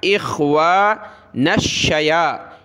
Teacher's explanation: نون کو شین کے ساتھ ملایا